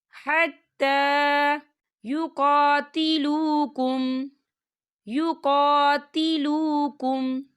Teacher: کھڑی حرکات ہے، تو ہم اسے 2 حرکت کے برابر کھینچیں گے